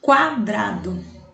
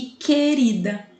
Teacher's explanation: Vejam que em quadrado eu escuto o som do U. Já em querida, eu não escuto o som do U.